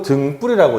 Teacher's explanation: 디귿 다음에 나오는 비읍이 된소리 규칙에 의해서 쌍비읍으로 바뀌게 됩니다. 경음화가 생긴 거예요.